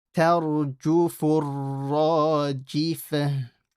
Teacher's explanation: Don't say tarju, ta. And only the ra is heavy.